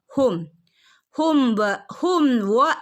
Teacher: മീമിന്റെ മുകളിൽ സുക്കൂൻ വന്നാൽ കറക്റ്റ് വ്യക്തമായിട്ട് ഹും എന്ന് ഓതണം അവിടെ മണിക്കുകയൊന്നും ചെയ്യരുത്